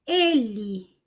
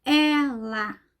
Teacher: quando eu pronuncio é aberto os lábios ficam mais abertos e o som sai sempre mais aberto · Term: e aberto